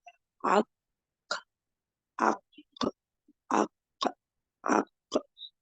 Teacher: लेकिन ये काफ जो है ये आक मोटा रहेगा और कलकला होगा